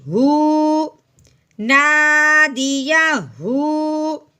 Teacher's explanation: الٹا پیش جہاں آ جاتا ہے تو اس کو ایک الف کے برابر لمبا کرتے ہیں